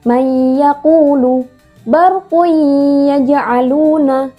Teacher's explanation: dibacanya dengung dan bersambung atau melemburkan atau memasukkan huruf nun sukun atau tanwin itu ke huruf setelahnya